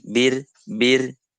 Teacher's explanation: ringan saja seolah-olah itu ro itu ada ada di ujung lidah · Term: ro tipis